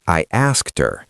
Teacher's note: The H is gone. It's invisible.